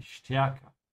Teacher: make sure to pronounce the ST like a sh, yeah? Because the S comes before it, die stärker.